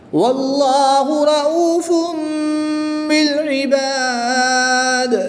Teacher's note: تنوین کو میم سے بدل کر 2 پیش کی تنوین کو میم سے بدل کر غنہ زمانی کر کے پڑھیں گے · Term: اقلاب